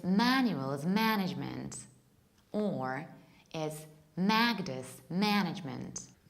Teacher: you stress the first syllable, which is ma. In an American accent, that would be, it's Manuel's management, or it's Magda's management.